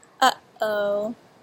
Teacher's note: you suddenly cut off your voice in the back of your throat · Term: glottal stop